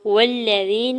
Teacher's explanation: واو کے زبر کو لام شدت کے ساتھ ملاتے ہوئے پڑھیں گے، یا ساکن سے پہلے زال کے نیچے زیر ہے یا مدہ ہو رہا ہے، نون کے زبر کو جلدی سے ادا کریں گے۔